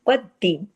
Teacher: शितुम वक़द्दिमू सख्ती से जोड़ना है और क़ाफ को हैवी पढ़ना है क्योंकि क़ाफ जो है मोटे 7 हुरूफ में से है